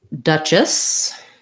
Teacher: Duchess has first syllable stress. It has that stressed schwa sound. And then the CH says the ch sound.